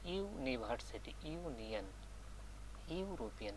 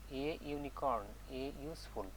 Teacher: ইউনিভার্সিটি, ইউনিয়ন etcetera begin with এ consonant sound that of ইউ, যদি এইটা vowel দ্বারা শুরু হওয়া সত্ত্বেও উচ্চারণটা যদি ইউ হয়ে যায় তখন সেই নাউনের পূর্বে যেটা বসার কথা আর্টিকেল, ইনডিফিনিট আর্টিকেল, তার বিপরীতটা বসবে।